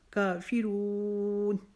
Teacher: رون کو ہم لمبا کر سکتے ہیں کیونکہ یہ آیت کا آخری لفظ ہے جو 2، 2.5، 3 حرفوں تک بھی کھینچ کے پڑھا جا سکتا ہے۔